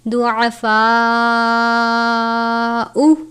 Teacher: ضعفاء، عین کو باریک پڑھتے ہیں، الف سے پہلے زبر ہے الف مدہ، بڑی مد ہے 4 یا 5 الف یا 4 یا 5 حرکات کے جتنا لمبا کر کے پڑھیں گے